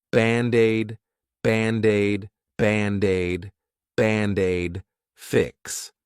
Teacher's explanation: Band-Aid is 2 words. But to pronounce them like one, I'll take that D and transfer it to the vowel.